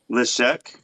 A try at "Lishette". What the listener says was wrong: No, with like a TH. TH at the end.